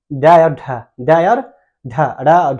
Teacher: जो हमारा जीभ है ना, नीचे से उठकर अचानक से ऊपर जाता है और अचानक से नीचे, जैसे ड और ढ, ड और ढ, अड़ा और ढ, ये सब अड़ा ढ बोलिए, देखिए ऊपर जाएगा नीचे आ जाएगा, है कि नहीं।